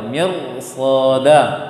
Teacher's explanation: Roh sukun sebelumnya kasroh. Apapun huruf tebalkah tipiskah hurufnya, dia akan tetap tipis.